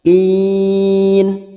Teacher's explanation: Kin, karena kita memilih untuk waqaf di sini, nafas kita tidak mampu untuk melanjutkan, maka kin hukumnya mad arid li sukun, pertemunya mad dengan huruf hidup dan dibaca waqaf. Kin, mad arid li sukun kita tentukan 4 harakat kita panjangkan.